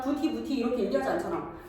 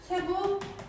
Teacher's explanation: 티읕이 이모음 만나가지고 치로 발음되는 현상.